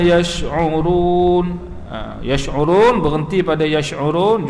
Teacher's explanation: juga ma'arid lisukun, panjangnya 2 atau 4 atau 6 harakat. Tengok cara baca kita lah.